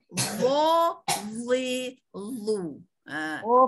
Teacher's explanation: Bila kita sebut dia ada bersifat isti'la, pipi kita ni jadi kembung. Tidaklah kembung beria, kembung tidaklah ketara kembungnya sampai bulat ya, melembung.